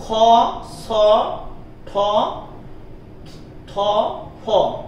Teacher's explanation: খ, ছ, ঠ, থ, ফ, এগুলো হচ্ছে মহাপ্রাণ ধ্বনি